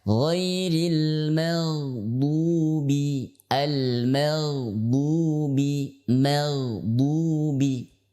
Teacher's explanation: huruf ghain termasuk huruf yang lemah, ya, atau huruf rokhwah yang ia bersandar kepada suara